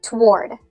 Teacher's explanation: in American English, most people pronounce this as one syllable, toward. It's almost like that first O doesn't exist.